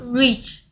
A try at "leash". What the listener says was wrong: 에? 왜 혀가 뒤로 들어가? Leash.